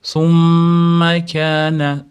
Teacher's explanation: Mat roba summa kaana mimda tashdidlik kelgani uchun komil g'unna qilamiz, ushlab turamiz